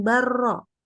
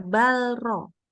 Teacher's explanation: kalau pas lamnya itu ketemu sama ro, lamnya jadi nggak dibaca, langsung lebur ke ro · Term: idgham mutaqaribain